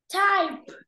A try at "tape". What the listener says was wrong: Nó đọc là tie hay là gì? A, đúng không? Là A, A. Vậy là T-A. T.